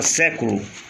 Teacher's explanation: Proparoxítona, a sílaba forte é a antepenúltima